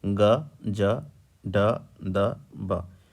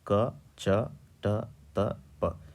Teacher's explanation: दोनों में आप स्पष्ट रूप से अंतर जो है देख सकते हैं कि उच्चारण के समय इन वर्णों के उच्चारण में आपको अधिक कंपन और इन वर्णों के उच्चारण में आपको कम कंपन सुनाई देगा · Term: घोष वर्ण